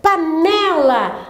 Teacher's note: A sílaba tônica é o né.